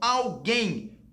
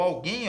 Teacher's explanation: a sílaba tônica é a última. Se a sílaba tônica é a última, a palavra é oxítona.